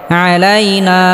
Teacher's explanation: জবরের বাম পাশে খালি আলিফ মাদের হরফে আলিফ পরিমাণ লম্বা করে টেনে পড়তে হবে